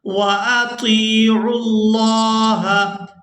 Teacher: عین کو لفظ اللہ کے لام کے ساتھ ملائیں گے